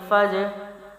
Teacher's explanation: جیم ساکنہ ہے، قلقلہ کریں گے کیونکہ قلقلے میں سے ہے۔